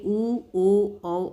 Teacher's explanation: वृत्ताकार स्वर, ऐसे स्वर जिनके उच्चारण ओठों के आकार गोल हो जाते हैं बोलते वक्त